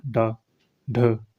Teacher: जो जीभ का अगला भाग थोड़ा ऊपर उठकर आपका झटके से नीचे आता है। ठीक है, जीभ का आपका जो आगे वाला भाग होता है वो ऊपर जब थोड़ा ऊपर उठकर आपके झटके से नीचे आता है, आप बोल के देख सकते हो ड ढ, अपना जीभ आपके झटके से नीचे आती है, तो इसको क्या कहते हैं आपका उत्क्षिप्त आपका व्यंजन कहते हैं। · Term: उत्क्षिप्त व्यंजन